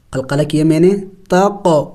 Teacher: قاف زبر تق، قلقلہ کیا میں نے، تق، اس لیے کہ قاف حروف قلقلہ میں سے ہے، ساکن ہے تو قلقلہ کریں گے یعنی اس کو ہلا کے پڑھیں گے